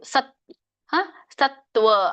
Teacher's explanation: ಸಂಯುಕ್ತಾಕ್ಷರ ಇದೆ ಸತ್ ಅಲ್ಲಿ ಹಿಂದಿನ ಅಕ್ಷರಕ್ಕೆ ಒತ್ತು